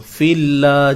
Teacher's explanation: kalimah Allah ini perlu dibaca dengan nipis